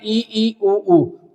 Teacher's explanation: मुख बिल्कुल न के बराबर कम खुलता है वो कहलाते हैं संवृत स्वर